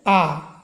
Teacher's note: जब बोलेंगे तो मुख द्वार पूरी तरह से खुल जाता है। और विपरीत स्वर क्या है, आ, विपरीत स्वर है।